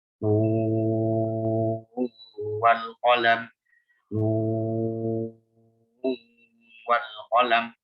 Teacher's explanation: Jadi dia diidgham antara sakinah ketemu waw.